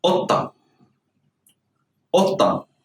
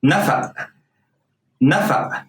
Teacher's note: the qaf is pronounced like a glottal stop